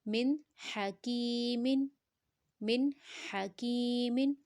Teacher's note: ہا کا ساؤنڈ گلے کے درمیانی حصے سے آئے گا اور حروف حلقی ہے نون ساکنہ کے بعد، یہاں ہا ہمارے پاس حروف حلقی میں سے ہے تو نون کے ساؤنڈ کو ظاہر کریں گے، غنہ نہیں کریں گے۔